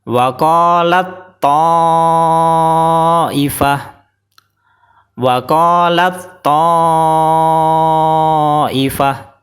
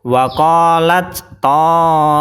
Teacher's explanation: Karena tak sukun belum dimasukkan ke to. Jadi taknya masih berdiri sendiri, sifat hamesnya masih keluar atau nafasnya masih keluar. Karena salah satu sifat tak adalah hames. · Cara bacanya langsung dimasukkan tak sukun ke to. Jadi to ini seolah-olah ada tasdidnya.